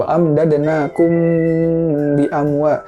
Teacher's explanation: Wa amdadnakum bi amwa, ditahan gitu. Mimnya ditahan 3 harokat karena mim mati ketemu sama ba gitu.